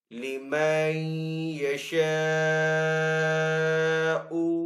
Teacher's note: نون ساکن ہے، نون ساکن کے بعد یا ہے حروف یرملون میں سے، تو یہاں پہ ادغام والا غنہ ہوگا. آگے الف سے پہلے شین کے اوپر زبر ہے تو یہاں پہ الف مدہ ہے.